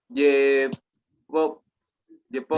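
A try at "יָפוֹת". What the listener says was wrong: Hay una camada debajo de la yud. Yafot. Ya.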